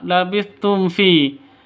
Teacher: Mim mati bertemu dengan fa. Cara bacanya jelas terang karena bacaan izhar syafawi. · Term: izhar safawi